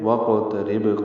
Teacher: قاف پہ بھی قلقلہ کیا اور با ساکن پہ بھی قلقلہ کیا